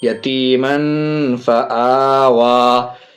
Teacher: تنوین کے بعد فا حرف اخفا میں سے ناک میں آواز چھپا کر کے پڑھیں گے